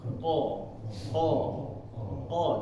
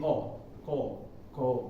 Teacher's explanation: itu kayak menyentuh ini lidah ini langit-langitnya naik belakangnya o dan untuk huruf q ini karakternya adalah tebal ya Pak jadi mulut ini terisi jangan jangan kita membaca itu seperti Huruf Kaf huruf k ya